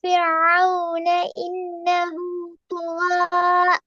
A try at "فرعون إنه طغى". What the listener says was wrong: தொகோ என்று போக கூடாது, அது போறது போல.